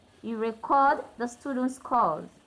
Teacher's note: So the stress is on the second syllable. This is a verb.